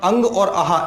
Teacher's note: अंग और आह इन दोनों का उच्चारण स्थान होता है कंठ